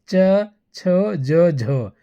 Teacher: स्पर्शी संघर्षी कहलाता है क्योंकि स्पर्श करके आवाज निकलता है